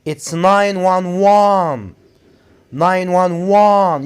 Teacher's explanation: you have to put the stress on the last syllable which is one